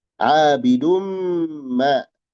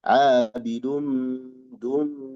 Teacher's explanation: Nah, di sini tanwin menghadapi mim. Ada idgham bi gunnah.